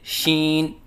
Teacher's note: ناک میں آواز لے کے جانا